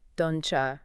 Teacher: And a classic is don't you very very often becomes don't you. The T and the Y sounds blend together.